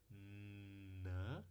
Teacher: E as 3 últimas, na é nasal. A ponta da língua encosta nos alvéolos, então é nasal alveolar. Se eu quiser, posso falar nasal alveolar sonora ou vozeada, mas não preciso porque as nasais as 3 são sonoras.